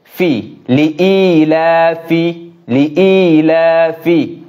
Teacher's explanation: সামনের দাঁত নিচের ঠোঁটের পেটের সঙ্গে লাগবে